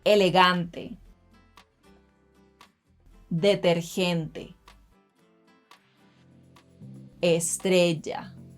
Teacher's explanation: la letra eh, letter e, will always be eh